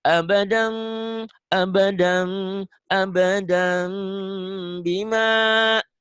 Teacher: tetap bibirnya mingkem, bibir bawah, bibir atas abadam, bunyi M, tapi ada ang-nya. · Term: iklab